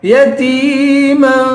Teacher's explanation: یتیما تا کو یا سے ملائیں گے، یا حروف مدہ ہے، اس کو ایک الف کی مقدار کھینچ کے پڑھیں گے